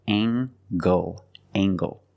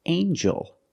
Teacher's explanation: And then we have, with E-L, angel. In this word, the G makes a J sound, like jump and juice. Together with the N, a regular N sound, not the nasal but the regular N.